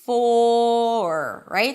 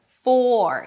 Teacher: So when the word is stressed, you want to make sure that you hear the O sound, you drop your jaw, you round your lips, you keep the tongue down, full, and only at the end you bring it up for the R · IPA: fɔːr